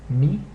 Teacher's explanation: it's pronounced e as in the English word beat but it's a shorter sound than in the English word beat